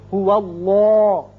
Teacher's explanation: اس کا قاعدہ آپ پڑھ چکے ہیں کہ یہ درمیانی جو لام ہے یہ اگر پہلے زبر یا پیش آ جائے تو اس کو پر کر کے منہ بھر کے پڑھتے ہیں. چونکہ واو پر زبر ہے اس لیے اس کو پر پڑھیں گے